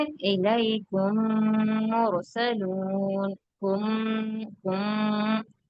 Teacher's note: میم کو میم سے ملانے پہ کیا ہے، ہونٹوں میں ایک طرح کی وائبریشن آ رہی، تو اس کو کہتے ہیں ادغام، ادغام شفوی۔